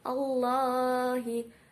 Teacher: lafaz Allah didahului dengan harokat fathah dibaca tafhim